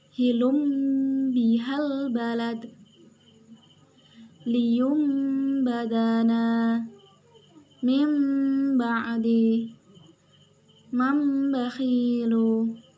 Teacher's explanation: menyuarakan nun mati atau tanwin menjadi suara mim dengan merapatkan 2 bibir serta mendengung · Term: iqlab